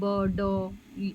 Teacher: हैं करता है या नहीं जब व्यंजन का उत्पादन होता तो सघोष होता है जिसमें स्वर यंत्र कंपन करता है